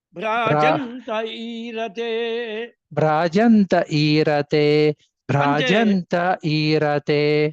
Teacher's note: ఈరా అనేటువంటిది మధ్యకి చెప్పాలి, మధ్య ఓకే ఇక్కడ స్వరితం అది